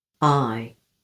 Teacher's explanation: Then there's the diphthong, I, like in my, time, Friday. It starts with an open jaw, then the jaw glides upwards.